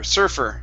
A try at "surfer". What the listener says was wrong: Good. One more time.